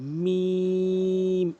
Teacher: মিম দুই ঠোঁটের ভেজা অংশ মিলিত করে মিম এভাবে উচ্চারণ করবেন মিম।